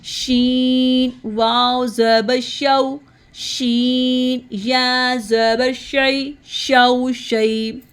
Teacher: اب ہم شین کو زبان کے درمیان سے ادا کریں گے مڈل ٹنگ سے. شین واو زبر شو شین پڑھتے ہوئے آواز منہ میں پھیل جاتی ہے.